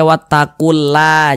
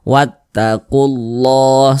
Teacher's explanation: sebelumnya ada huruf yang memiliki tanda baca domhomah maka lafaz Allah dibaca tebal dibaca tafkhimah sehingga ini kita baca wattaqulah begitu Jangan dibaca wattaqula jangan tapi